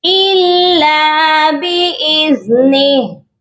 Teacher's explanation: ہم نے ہا کو سائلنٹ کرنا ہے، تو سائلنٹ کیسے ہوگا، ہا کی جو حرکت ہے کھڑی زیر ہے وہ نہیں پڑھی جائے گی